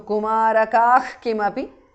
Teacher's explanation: Visarga changes to Jihva Muliya